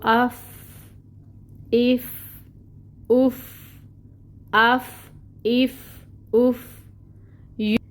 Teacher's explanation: जब हम फ़ा के मखरिज पे आते हैं तो सांस बाहर निकल रही है। आफ, मखरिज पे कमज़ोरी की वजह से सांस बाहर फ्लो हो रहा है। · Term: हम्स